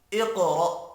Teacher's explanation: قاف ساکن ہے، قلقلہ کریں گے، حروف مستعلیہ بھی ہے، قاف پر بھی پڑھنا ہے۔ را بھی پر پڑھیں گے زبر کی وجہ سے، حمزہ ساکن ہے۔